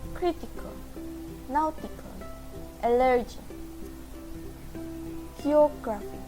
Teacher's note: The third rule is stress on the antepenultimate syllable. The stress tone only works for the third syllable from end of the word.